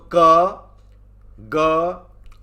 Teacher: जैसे क वर्ग ले लिया तो क, ग और पांचवा अंग, ये 3 अक्षर जो हैं वो अल्प प्राण कहे जाएंगे, क्योंकि इनको बोलने में मुंह से जो हवा निकल रही है वो कम मात्रा में निकलेगी